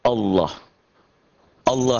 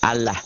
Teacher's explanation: Mengucapkan huruf lam dengan tebal sampai memenuhi mulut ketika mengucapkannya. Sementara suara A-nya lebih mendekati O.